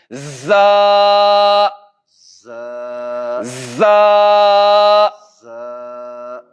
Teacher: جب زا کو ادا کریں گے تو اس کو سیٹی کے ساتھ ادا کریں گے